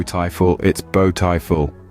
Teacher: you notice how the first syllable B stood out that's because it's stressed when a syllable is stressed it's pronounced more loudly for a